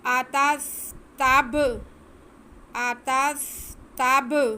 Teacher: बा की आवाज़ को हम जुम्बश दे के पढ़ेंगे, वासे करके पढ़ेंगे, क्योंकि बा हरफ़े कलकला में से है और हरफ़े कलकला साकिन हो तो उन्हें जुम्बश दे के पढ़ा जाता है।